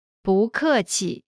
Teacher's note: when 不 is followed by a fourth tone, its tone changes from the fourth tone to the second tone.